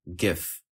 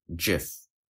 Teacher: Some individuals pronounce the word with a hard G, as in GIF, whereas others pronounce it with a soft G